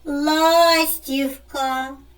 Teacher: наголос падає на перший склад